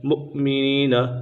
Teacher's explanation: ان الذين فتنوا المؤمنين مؤمنین، حمزہ ساکنہ ہے، حمزہ ساکنہ میں ہمیشہ جھٹکا دے کر پڑھیں گے